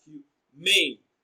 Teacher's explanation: Humane is stressed on its second syllable as humane.